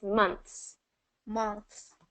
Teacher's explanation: continuous airflow between the TH and S